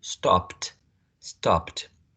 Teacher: Then, if we're having the past tense marker, right, for this one, it has to be t, because t is a voiceless consonant sound as well, just like p.